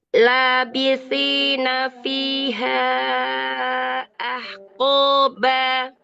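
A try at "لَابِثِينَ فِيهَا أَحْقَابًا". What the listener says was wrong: Oh, ya, ba jangan terlalu dikuatkan. Dia mutawassit saja. Dalam pengucapan ba jangan ba tapi ba gitu aja ya. Labithina fiha ahqaba gitu aja ya. Jangan ba, jangan terlalu dikuatkan.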